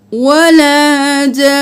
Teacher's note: نون مشدد ہوگا تو نون کو 2 بار آواز کی آئے گی۔